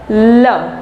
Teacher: जीवा ऊपर रहती है, जो हवा है वो जीवा के दोनों तरफ से बाहर निकलती है, दोनों पार्श्वों से बाहर निकलती है, इसलिए इसको पार्श्विक व्यंजन कहा जाता है।